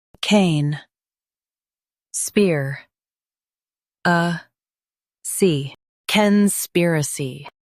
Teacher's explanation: Focus on spear and soften a see.